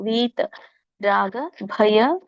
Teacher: ವೀಕೆ ದೀರ್ಘ ಇರೋದ್ರಿಂದ ಎಳಿಬೇಕು